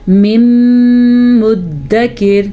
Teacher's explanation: ساکن را سے پہلے زیر ہے تو یہ را باریک پڑی جائے گی